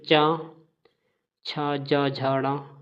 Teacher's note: तालु की बात करें तो च ज झ ड ये हमारे तालु होते हैं